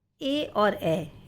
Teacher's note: आपकी जीभ हमारे मुंह के अंदरूनी भाग के ऊपरी हिस्से को स्पर्श करती है, जो कि तालु कहलाता है। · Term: कंठ और तालु